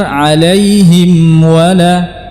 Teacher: tidak diidghamkan kepada huruf waw, karena huruf keduanya makhrajnya sama, mim dan waw makhrajnya sama, maka di sini harus berhati-hati jangan sampai mimnya menjadi idgham kepada huruf waw, alaihim wala, tapi yang benar alaihim wala, ghairil maghdubi alaihim wala, alaihim wa, ya, ghairil maghdubi alaihim waladdallin.